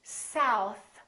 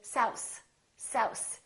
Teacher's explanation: instead of saying south, they say souse, souse, because they're pulling in their tongue too much. So make sure that your tongue touches the teeth.